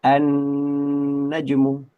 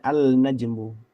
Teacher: lam sukunnya melebur ke huruf nun itu. Nah, idgham yang melibatkan huruf nun dipastikan dihukumi sebagai ghunah karena huruf nun itu sendiri huruf hidung ya gitu. · Idgham syamsiyah atau alif lam syamsiyah. Ya, kita bacanya annajmu tidak dibaca alnajmu.